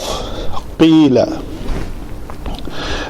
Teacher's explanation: تو جو موٹے حروف جب مکسور ہوں تو وہ مرقق کی طرف مائل ہوتے ہیں، پتلوں کی طرف مائل ہوتے ہیں. تو بہرحال اس کا مخرج وہ جو لوتھڑا لٹک رہا ہے، قوا جسے کہتے ہیں، وہ بالمقابل تالو کے ساتھ لگے تو یہ ادا ہوتا ہے قاف